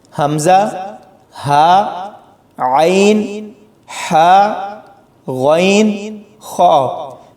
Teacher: یعنی یہ حروف حلق سے ادا کیے جاتے ہیں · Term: حروف حلقی